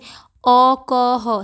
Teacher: अ क ह सभी के कंठ से निकल रही है